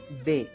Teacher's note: B, porque es una B labial, no es una B labidental. La B labial, que es la B de Brasil, la B de bueno, es una B que solamente va a utilizarse los 2 labios para poderla pronunciar. Y por supuesto, se mueve la vocal, las cuerdas vocales, porque está acompañada con una vocal.